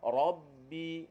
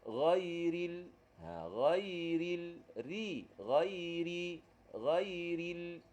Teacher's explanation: Yang gambar nombor 2 tu, ra nipis. Ra nipis ni pangkal lidah tak naik.